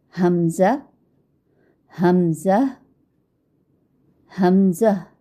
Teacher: حمزہ میں ہا کو بغیر کھینچے میم کے ساتھ ملائیں اور پھر میم میں آواز کو لمبا نہیں کریں گے